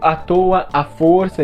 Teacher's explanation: pronunciam os dois As como um A só aberto